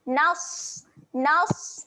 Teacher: Nas huruf Sad yang mati. Sifatnya keluar angin.